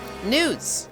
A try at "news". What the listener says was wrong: You pronounced it weird. You said a D instead of a W.